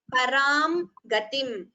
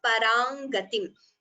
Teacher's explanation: Anuswara could be chanted completely or optionally by combining it as parangatim.